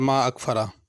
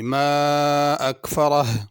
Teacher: آخر میں ہا کی آواز ظاہر ہونی چاہیے۔ عموماً جلدی میں یوں پڑھ لیا جاتا ہے ما اکفرہ، تو یہ صرف را ادا ہوئی ہے، ہا ادا نہیں ہوئی۔